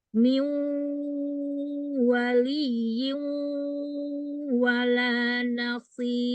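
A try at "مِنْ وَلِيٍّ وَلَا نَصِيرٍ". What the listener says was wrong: Tambahin lagi sedikit gunahnya. Masukin lagi ke hidung.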